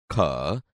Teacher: ખ વ્યંજન કંઠ માંથી જ નીકળે છે પરંતુ ક અને હ ભેગા મળી જતાં વધુ પ્રાણ વાયુ ની જરૂર પડે છે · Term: મહાપ્રાણ